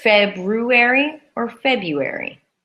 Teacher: we squish them into two syllables rather than three